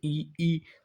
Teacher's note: जब आप बोलेंगे तो देखेंगे जीभ तालु पे लग रही